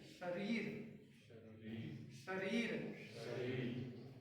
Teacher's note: हमारी जो जीवा है ऊपर की तालू पर टकरा रही है।